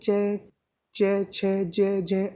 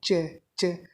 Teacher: ध्वनि तालु से आती है। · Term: चय वर्ग